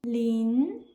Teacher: Ling, rising tone, second tone.